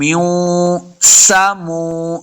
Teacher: سن پہ سیٹی کی آواز آئے گی، میم پیش واو مو، پہلے بھی بتایا واو کے اوپر اپنے دونوں ہونٹ گول ہوں گے تب واو کا مخرج سے ادا ہوگا۔